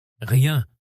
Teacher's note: Ce R doit partir du fond de la gorge, avec un léger frottement. Rien. Là, il est un peu plus doux, mais il garde ce frottement guttural.